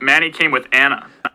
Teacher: you can kind of see a nice little glottal stop at the beginning of that anna